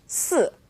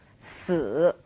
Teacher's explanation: Now, we all know the number 4 is pronounced 4, fourth tone, right? Well, the word for death, or to die, is pronounced 死, third tone.